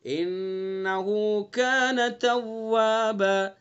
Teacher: انہو غنہ کریں گے، نون مشدد ہے